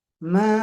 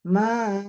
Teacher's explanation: Ma, bagusnya itu suaranya dari atas sambil turun. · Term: enam harokat